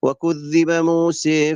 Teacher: موسى اماله بدون مد